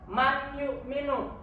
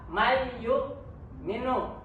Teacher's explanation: Idgham Bighunnah karena ada nun mati bertemu dengan huruf ya